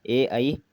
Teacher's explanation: इसके बाद आते हैं तालु कंठ्य, ए आई, जीभ तालु पर ध्वनि कंठ से, जीभ तालु पर और ध्वनि कंठ से ये उच्चरित होते हैं।